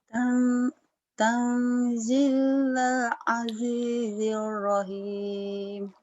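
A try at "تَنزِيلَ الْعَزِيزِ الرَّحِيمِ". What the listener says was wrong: bagus, cuman buru-buru di sini lalanya.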